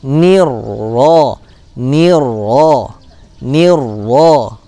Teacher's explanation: Maka lam sakinahnya tidak dibaca, masuk ke dalam huruf ro. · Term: idgham syamsiyah